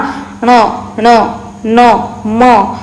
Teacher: या वर्णाचा उच्चार करताना त्या त्या वर्णाच्या उच्चार स्थानाबरोबर नासिकेतून नाकातून आवाज येतो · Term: अनुनासिक वर्ण